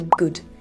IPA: gʊd